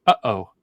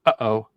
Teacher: and O uh oh that that's a glal stop your your your throat closes completely before the next sound goes out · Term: glottal stop